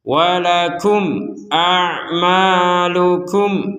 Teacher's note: Nah, jadi di sini kemudian ada mim sukun bertemu hamzah, kita membacanya dengan jelas